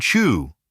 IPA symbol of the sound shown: tʃ